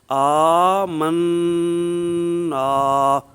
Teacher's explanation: ناک کے بانسے میں ایک الف مقدار تک آواز جاری رکھیں گے